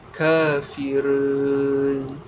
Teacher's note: tarqiq ra, iaitu membunyikan ra dengan bunyi yang nipis. Didahului dengan huruf yang berbaris bawah seperti kafirun.